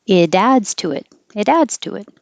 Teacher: an intrusive W, a hidden W, because you're going from rounded lips to unrounded lips